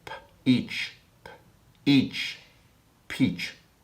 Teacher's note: It begins with the sound p, and then the voice kicks in with each